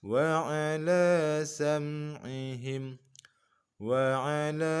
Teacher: wa ala la di sini kita baca mad 4 harokat.